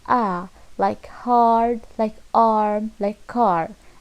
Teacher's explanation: And the last one is A, like hard, like arm, like car. And the position of A is long, low, back, spread vowel